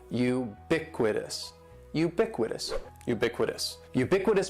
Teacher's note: the stress is going to be on that second syllable